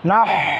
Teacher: কণ্ঠনালীকে চাপ দিয়ে হা উচ্চারণ করতে হবে